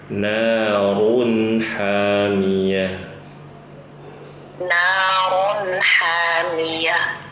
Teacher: kalau kata naru harus monyong ya ibu-ibu ya, karena khawatir kalau kita nggak monyong terdengarnya seperti naron